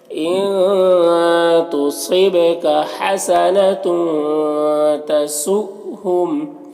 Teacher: یہاں پر حمزہ ساکنہ ہے واو کی شکل میں تو جھٹکا لگے گا · یہاں پر نون میں اخفا ہوگا، صاد کو پر پڑھیں گے، حروف مستعلیہ میں سے، با میں قلقلہ ہوگا